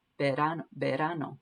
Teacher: And that R again is like a D. It just kind of taps the roof of your mouth.